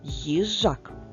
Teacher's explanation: так вийшло чотири букви але п'ять [музика] звуків абсолютно правильно адже буква ї позначає завжди два звуки М'який приголосний й та голосний і